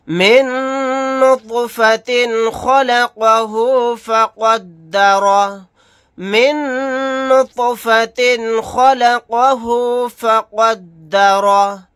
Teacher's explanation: من نطفۃ خلقہ فقدرہ، من نطفۃ خلقہ فقدرہ، نون کے اوپر تشدید ہے، یہاں پر غنہ کر کے پڑھیں گے، طوا ساکن ہے، یہاں پر قلقلہ کریں گے، تنوین کے بعد خا آ گیا، یہاں پر اظہار کا قاعدہ ہوگا۔